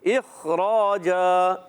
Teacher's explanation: تو کلکلا نہیں کرنا. را زبر را، الف مدہ ہے، ایک الف کھینچنا ہے اور را کو موٹا بھی رکھنا ہے. دو زبر کی تنوین کو وقف کی حالت میں بدل دیں گے الف سے.